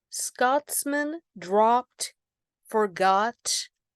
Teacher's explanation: obviously share the ah sound assonance and a lot of consonance together